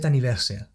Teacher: to see is those words actually linked up more together so the t from set links into the vowel at the beginning of anniversary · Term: liaison